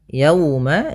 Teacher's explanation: ada wau sukun didahului dengan fathah maka ini bacaan lin yang di mana kita lembutkan dalam melafalkannya